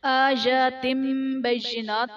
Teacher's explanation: تنوین کو ہم میم سے بدل کر اخفا کریں گے، یعنی غنہ کر کے پڑھیں گے۔ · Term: اقلاب